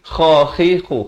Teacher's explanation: kha di hujung kerongkong ini makhrajnya